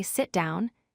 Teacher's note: The falling pitch makes commands sound firm and clear. It shows authority and tells the listener that the instruction is final. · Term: falling intonation